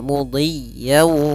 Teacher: ada tasdid di huruf ya maka ditekan y-nya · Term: tasydid